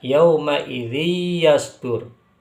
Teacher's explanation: Dan setelah itu ketika tanwin bertemu dengan huruf ya, yauma idzi yasdur, itu maka dinamakan idgham bi gunnah. Karena tanwin dimasukkan ke huruf ya disertai dengan dengungan atau dengan gunnah dengan kadar yang agak lama didengungkannya.